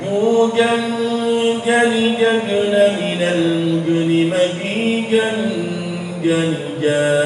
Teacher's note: Dan sifatnya jim termasuk jahar. Nggak boleh ada desisnya